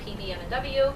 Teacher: These are sounds that are made with both of the lips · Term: bilabial